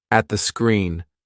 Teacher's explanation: we've got another T that we don't say. At the screen. So you go to say it. Nearly say it, but don't release it.